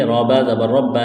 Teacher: را کے اوپر زبر ہے، را کو موٹا کریں گے